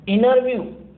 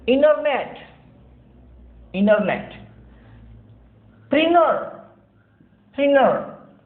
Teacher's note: ऐसी स्थिति में जब NT साथ आते हों तो T silent रहता है American English में. So we pronounce this word as interview.